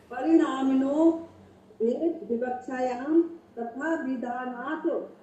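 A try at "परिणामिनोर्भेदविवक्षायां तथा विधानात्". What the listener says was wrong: परिणामिनोर, रा भी लगाना है, ठीक है।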